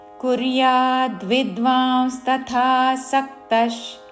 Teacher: విసర్గ ఉచ్చారణ తాళవ్య ష